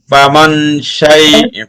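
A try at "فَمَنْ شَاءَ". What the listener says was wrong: ফামাং ও আরো ছোট করে ফামাং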